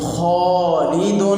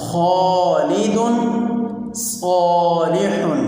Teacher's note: ان دونوں مثالوں میں آپ دیکھیں کہ موٹے حروف میں سے خالد میں خا یہ موٹے حروف میں سے ہے، اس کے بعد الف آئی ہے، تو لہٰذا اس کو سب سے زیادہ پر یعنی موٹا پڑھیں گے، خالد۔ اسی طرح دوسری مثال صالح، صاد جو حرف ہے یہ پر پڑھے جانے والے حروف میں سے ہے، اور صاد کے بعد الف آ رہا ہے، اس لیے اس صاد کو بھی ہم جو پر حروف ہیں ان میں سب سے زیادہ پر پڑھیں گے۔